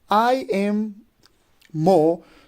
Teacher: The first 2 syllable would be unstressed, while the third one would be a stressed one. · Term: anapestic foot